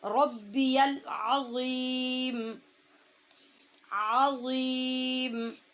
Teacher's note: عین کو ہا والی جگہ سے پڑھنا ہے وسط حلق سے، اور غیم یہ بغیر سیٹی کی آواز کے اور پر پڑھا جائے گا.